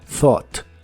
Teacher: La TH del principio es la TH suave de inglés, que suena solo como aire. Y las letras que están casi al final, U, G, H, realmente no se pronuncian.